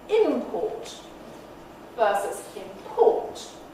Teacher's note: nothing changes except the location of the nucleus the segments stay exactly the same